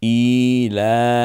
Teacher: ইতে যতটুকু টানবেন লতে ততটুকুই টানবেন, কারণ দুইটাই হচ্ছে খাড়া জের এবং খাড়া জবর, একালিফ করে টান পাবে।